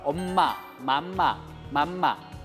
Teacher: 윗입술과 아랫입술이 닿았다가 막히면서 코로다 나온 소리가 미음이죠. 그래서 입을 앙담은 모습으로 미음을 만든 겁니다.